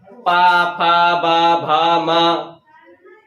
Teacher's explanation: पा फा बा भा मा, ओंठ बंद हो रहे हैं तो ये सब हो जाते हैं ओष्ठ व्यंजन